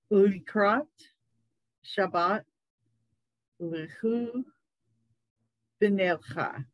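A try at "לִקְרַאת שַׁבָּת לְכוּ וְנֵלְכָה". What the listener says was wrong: Yes, very nice.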